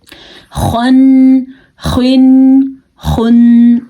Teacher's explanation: यह जो नुक्ते वाली ख होती है इससे गले में खरखरा हट सी पैदा होती है तब यह ख अदा होता है · یہ جو نقطے والی خا ہوتی ہے، اس سے گلے میں خرخراہٹ سی پیدا ہوتی ہے، تب یہ خا ادا ہوتا ہے